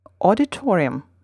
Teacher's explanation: note that in the english word the second strongest syllable is two syllables away from the main stress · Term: secondary stress